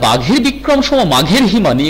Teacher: এখানে ঘ ঘ মহাপ্রাণ ধ্বনি উচ্চারিত হয়ে, ঘোষবর্ণ উচ্চারিত হয়ে বেশ শ্রুতির ঝংকার সৃষ্টি করলো।